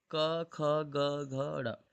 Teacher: मतलब पहला अल्पप्राण, दूसरा महाप्राण, तीसरा अल्पप्राण, चौथा महाप्राण, पांचवा अल्पप्राण। इन्हें नासिक्य भी बोल देते हैं। · पहला दूसरा क्या होता है? अघोष, अघोष। और तीसरा, चौथा, पांचवा होता है सघोष, सघोष, सघोष। लेकिन अल्पप्राण, महाप्राण में होता है अल्पप्राण, महाप्राण, अल्पप्राण, महाप्राण, अल्पप्राण।